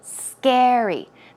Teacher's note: the stress goes on the first syllable